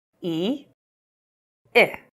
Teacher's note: One common feature that the two sounds share is that the tip of your tongue is behind your lower front teeth. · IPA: /i:/ /ɪ/